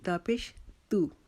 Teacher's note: تا کو ہم زبان کی نوک اوپر والے دو دانتوں کی جڑ کے ساتھ لگا کر تا کو باریک کریں گے، اپنے ہونٹوں کو اسمائلنگ پوزیشن میں کریں گے۔